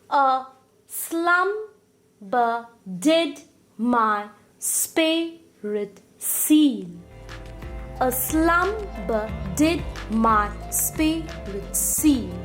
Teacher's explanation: Unstressed, stressed, unstressed, stressed, unstressed, stressed, unstressed, stressed. This is the pattern of rhythm in this particular line of poetry.